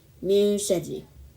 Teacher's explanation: the letter Sheen has a light sound, so the gunna is light too